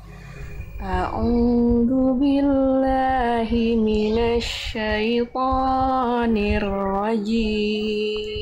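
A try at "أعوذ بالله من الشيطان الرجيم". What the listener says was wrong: Oke, dua hal Bunda. Pertama, pada saat a'udzu pastikan zalnya mengalir suaranya. A'udzu billahi minasyaitonir, jangan du ya. Lalu yang kedua, to jangan kepanjangan.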